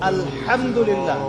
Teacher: এই হা এর মাখরাজ কোথায়? কণ্ঠনালীর মাঝখান থেকে। এখান থেকে আপনি উচ্চারণ করছেন আলহামদুলিল্লাহি রাব্বিল আলামিন, অর্থ দাঁড়াচ্ছে সমস্ত প্রশংসা জগৎ সমূহের রব আল্লাহর জন্য। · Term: হায়ে হুত্তি